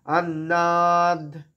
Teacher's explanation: अन्नाद, अन्ना বলবো, অ বলবো না, अन्नाद, अन्नाद না, ন সব দাঁতে এসে লাগবে